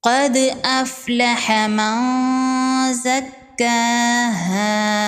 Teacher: نون کی آواز کو ناک میں چھپائیں گے۔ کھڑی زبر ہے، ایک الف کے برابر کھینچ کے پڑھیں گے۔ · دال حروف قلقلہ میں سے ہے، دال ساکن پر قلقلہ ہوگا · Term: اخفا